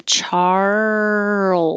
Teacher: keep making sound the whole time as your tongue moves from the r position to the l position and then the z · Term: rl movement